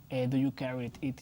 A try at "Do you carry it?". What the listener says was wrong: No me gusta como enlazas carry con it.